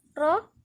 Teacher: الراء هنا مفخمة لأنها مفتوحة، والراء دي ليها استثناءات، مرة تفخم ومرة ترقق على حسب الحركة اللي عليها.